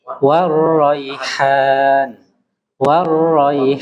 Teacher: jadi eh tasdid pada huruf ro itu harus diperjelas